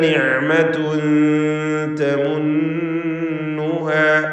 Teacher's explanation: നിഅമതുൻ തൻവീനും ശേഷം താഉം ഇഖ്ഫാ ഹഖീഖി നൽകി മറച്ച് മണിക്കണം. മണിക്കലിൽ തർക്കീഖാണ്.